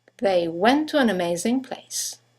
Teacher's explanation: two words one ending with a t the next one starting with a t they run into each other · you have the semivowel W that connects the vowels to and N to each other once again you don't necessarily